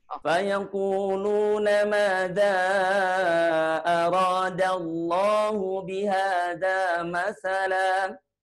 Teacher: Lafaz Allahnya Bu dikurangi sedikit, tidak terlalu panjang ya.